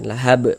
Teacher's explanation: Karena kalau berwakaf di huruf yang enggak dibaca panjang, hurufnya disukunkan, lahab. Kemudian huruf ba ini dia mantul menjadi qalqalah kubra